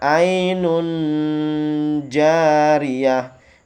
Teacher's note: Nun tanwin bertemu dengan huruf ja maka dibaca samar-samar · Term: ikhfa